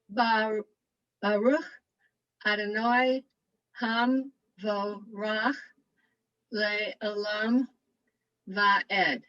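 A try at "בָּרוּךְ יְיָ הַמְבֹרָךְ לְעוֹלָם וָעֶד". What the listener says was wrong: Nice job.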